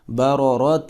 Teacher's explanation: تا 2 زیر 3 اخفا کریں گے، اور 2 را آ رہی ہیں، دونوں پر زبریں ہیں، تو دونوں کو ہم جو ہے وہ موٹا کر کے پر کر کے پڑھیں گے